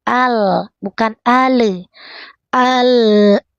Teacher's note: Sisi ujung lidah sentuhkan ke gusi atas, kemudian sedikit mengalir tawasud.